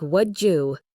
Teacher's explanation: Would you often sounds like would you, the D changes to a J sound because of the Y sound. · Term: Assimilation